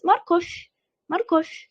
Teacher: Markov oxiri v ga tugaydi, mягкий znak bilan, lekin talaffuzda f deymiz.